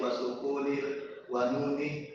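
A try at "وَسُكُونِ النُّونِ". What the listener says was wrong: Sukunin nu. Tidak ada wawunya. Sukunin nuni.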